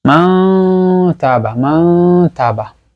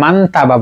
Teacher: আমরা এখানে মান তাবা বলবো না, মা তাবা গোপন করব। তা নুন সাকিনের সাথে যখন তা আসতেছে তখন তায়ের মাখরাজটা আমরা গোপন করব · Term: ইখফা